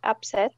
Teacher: put more stress on the second syllable